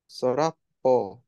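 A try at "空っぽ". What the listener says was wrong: It is the kanji for soda, but it's not pronounced as soda when it means the word empty. Soda means sky. Yep, kara.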